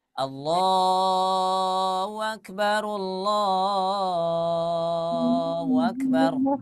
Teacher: padahal dia menyebutkan huruf H, tapi huruf H-nya hilang. Nah, itu salah satu contohnya bahwa huruf ini ya, huruf H ini memiliki sifatnya itu lemah, tersembunyi dia suaranya.